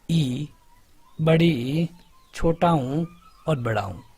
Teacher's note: जिनका उच्चारण करने में मुख का द्वार लगभग लगभग बंद रहता है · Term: संवृत्त